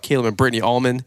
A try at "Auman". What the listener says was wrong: He says our name with an L. Yeah, you're like all. like,